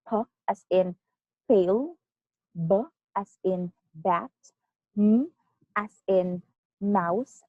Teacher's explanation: Okay, so bilabial comes from the word bi, meaning two, and labial, meaning lips, meaning these sounds are produced using both of your lips